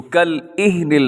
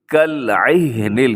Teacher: یعنی عین کی جگہ پہ حمزہ پڑھ دیا جاتا ہے